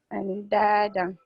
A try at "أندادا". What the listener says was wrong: Okay, don't pronounce the noon. This is ikhfa. We have to hide the noon. Andada.